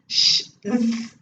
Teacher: linguopalatal, that is tongue and the alveolus form the controlling valve